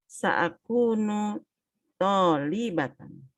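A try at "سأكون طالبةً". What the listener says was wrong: Tolibatan, Masya Allah. Tas, barakallahu fiik.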